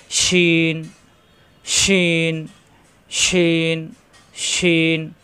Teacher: সিন এবং শিন একই নমুনা, উপরে নক্তা আসলে শিন, নক্তা ছাড়া সিন, শিন, এই যে উপরে 3 নক্তা, শিন, জিহ্বার মাঝখানে উপরে তালুতে চাপ দিয়ে আওয়াজ হবে